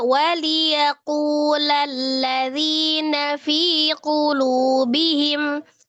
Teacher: Jadi kalau lanjut kunya 2 harakat aja. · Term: mad tabi'i